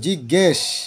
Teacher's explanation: জিজ্ঞে একটা এ উচ্চারণ হচ্ছে, তাই স্বরসঙ্গতি